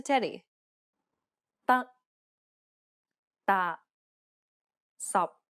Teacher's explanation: the final p t and K are unreleased in Cantonese this means that you must not release a burst of air when pronouncing this sound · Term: final stops